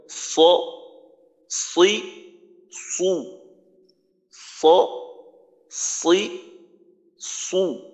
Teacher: তারপর সদের মাখরাজে যাব, সদের মাখরাজে যাওয়ার পর তার পরবর্তীতে যখন দেখবো যে আমার দোনোটা জায়গা ঠিক আছে, জিহ্বার গোড়াও উপরে আছে, তারপর জিহ্বার আগা মাখরাজে আছে, তখন আমরা সদের উচ্চারণটা করব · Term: ইস্তিলা